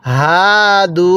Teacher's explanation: এই হাটা উচ্চারণের সময় আমরা গলার মধ্যে হালকা আওয়াজ করলে এই হাটা সহি শুদ্ধ উচ্চারণ হবে